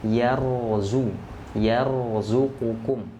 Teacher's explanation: Nah, ini huruf ra-nya sukun. Sebelumnya ada huruf ya yang berharakat fathah, maka ini dibaca tebal. Nah, jadi kalau sebelum huruf ra sukunnya ini hurufnya yang berharakat fathah dhammah itu dibaca tebal.